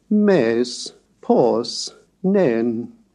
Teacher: the rising-falling tone of the circumflex accent